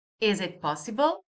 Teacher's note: I use the same word order as the sentence it is possible but I just raise the intonation in the end.